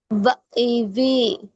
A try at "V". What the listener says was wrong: বা না, এই যে উপরের যে বা, এটা না। এই উপরের দাঁতের আগা, নিচের ঠোঁটের ভিজা অংশ। ভা, ভা ইভি। ভা ইভি,